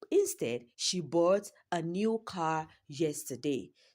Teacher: the emphasis is placed on the word bought and not sell and not sold is is placed on the word car and not bike, not airplane, not jet.